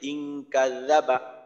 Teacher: জাল উচ্চারণ করার সময় মাখরাজটা হলো জিহ্বার আগা, সামনের উপরের দুই দাঁতের আগা